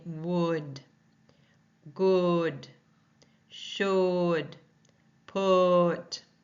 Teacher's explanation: The next symbol you see looks like a horseshoe, and it's a short U or oo sound. The tongue is high, it's back, the mouth is laxed